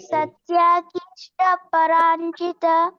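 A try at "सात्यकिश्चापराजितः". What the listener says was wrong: ಸತ್ಯ ಅಲ್ಲ ಪ್ರಭುಜಿ ಸಾತ್ಯ ದೀರ್ಘ ಇದೆ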